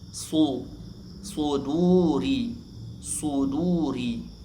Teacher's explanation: Du juga dibaca panjang dua harakat karena wau di dammah setelahnya bukan hamzah atau sukun asli.